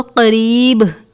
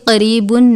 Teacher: وقف کی صورت میں با ساکن ہو جائے گا، ساکن کی صورت میں کلکلا کریں گے تو ہم اس کو قریب پڑھیں گے، قریبن نہیں پڑھیں گے.